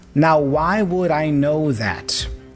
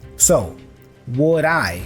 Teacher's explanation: the D has a flap sound which joins with i